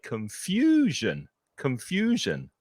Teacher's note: ending on the noun as confusion it's not the stressed syllable there are three syllables confusion and it's the middle the middle syllable that's stressed